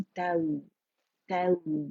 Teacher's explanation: हम फतह की आवाज को एक काउंट के लिए ऊपर लेके जाएंगे, जबड़ा खोलेंगे, ठीक है, और फिर नरमी से वाव से मिलाएंगे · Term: वावलीन